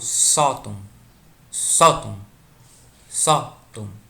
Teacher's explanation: a gente vê que a penúltima sílaba é a forte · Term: paroxítona